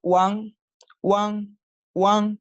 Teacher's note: primero se hace una U corta y ligera y luego una AN larga y enfática. One, cuando forma una sílaba por sí misma sin inicial, se escribe W-A-N, como está acá.